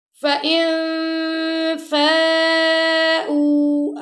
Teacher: نون ساکن بعد آ گیا فا، یہاں پہ ہم اخفا کریں گے